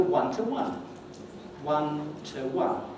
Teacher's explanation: The preposition to is in its weak form. Notice there are two stresses there on the two words, the two occurrences of one